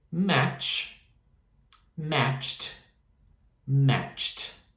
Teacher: o som do match no passado vai ser com T, que também é voiceless